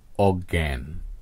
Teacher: শব্দের মাঝে বা শেষে উচ্চারিত ধ্বনিরূপ হয় গ হসন্ত গ চন্দ্রবিন্দু এর মতো